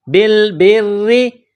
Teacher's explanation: را کے نیچے جب زیر آ جائے تو را کو باریک پڑھیں گے